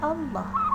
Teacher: Lafal ini mengandung lam tafhim karena huruf sebelum lam berbaris fathah, sehingga cara membaca lafal ini, kalimat Allah harus dibaca tebal